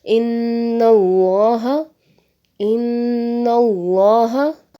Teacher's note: اسی طرح سے دوسری مثال ہے ان اللہ، ان اللہ، تو یہاں بھی جو ہے وہ لفظ اللہ سے پہلے زبر ہے تو ہم نے لفظ اللہ کو مفخم یعنی پر پڑھا ہے